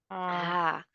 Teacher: Last part of our throat, where ha is coming from.